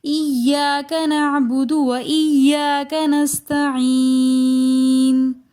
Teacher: نستعین میں یا مدہ کے بعد نون ساکن آ رہا ہے تو لہٰذا اس کو تھوڑا سا کھینچ کر پڑھیں گے